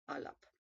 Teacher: It was pronounced as a voiced P, up sound, like with a schwa.